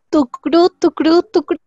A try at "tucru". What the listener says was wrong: Bueno, acá es tucru, tucru, tucru. Pronunciamos tuc y de ahí ru, no tucru.